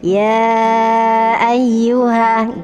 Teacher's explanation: Apabila ada mad bertemu dengan hamzah pada ayat berikutnya, itu disebut mad jaiz munfasil. Dibaca 2,5 alif atau 5 harokat. Jadi agak panjang ya, 5 ketukan.